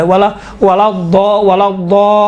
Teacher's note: دیکھیے خود لام ہے نا، لام یقیناً حروف لین میں سے باریک پڑھا جاتا ہے، کاملاً باریک ہے، لیکن یہاں پر لام چونکہ لام کے اوپر تشدید ہے، تشدید کی وجہ سے لام کا تلفظ تھوڑا سا موٹا اور ضخیم اور غلیظ طریقے سے کیا گیا ہے